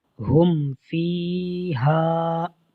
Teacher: اب یہاں پر میم ساکن کے بعد فا ہے، با بھی نہیں ہے، میم بھی نہیں ہے، تو یہاں پر اظہار شفوی ہوا ہے اور ہم نے غنہ نہیں کیا۔